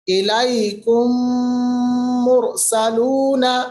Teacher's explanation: تھوڑی سی دیری کی، تھوڑی سی آواز کو آپ ناک کے بانسے میں لے گئے، یعنی ناک کا جو نوسٹرل کا اندر والا سائڈ ہے جس کو ہم خشوم بھی کہتے ہیں، اس کے اندر لے گئے، آپ نے غنہ ادا کیا۔